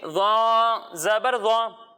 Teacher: جب ہم ذال کی ادائیگی کریں گے تو اس میں سیٹی کی آواز نہیں آئے گی، اور جب ہم زا کی ادائیگی کریں گے تو اس میں سیٹی کی آواز آئے گی، اور جب ہم ضا کی ادائیگی کریں گے تو اس میں بھی ذال کی طرح سیٹی کی آواز نہیں آئے گی، لیکن ضا کی ادائیگی کرتے وقت اسے ہم موٹا پڑھیں گے کیونکہ ضا حروف مستعلیہ میں سے ہے